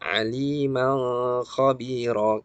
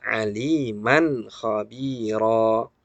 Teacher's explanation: Biasanya di tulisan Latin kita menulisnya dengan K dengan H ya, KH, kha. Nah, ada yang mengira bahwa kha itu hukumnya adalah ikhfa, padahal izhar. Maka jangan kita ikhfakan aliman khabira, keliru ya.